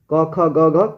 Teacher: क का उच्चारण स्थान है कंठ, क ख ग घ कंठ से बोला जाता है